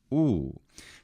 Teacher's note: In classical attic it is simply o so it's a closed vowel